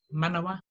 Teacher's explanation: bearing in mind there's no macrons across the manawa, so it's quick and fast